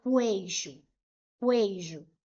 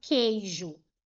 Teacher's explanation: Por exemplo, se eu coloco a palavra queijo, apareceu esse grupo aqui, ó, QU. Mas observem que eu não pronuncio o U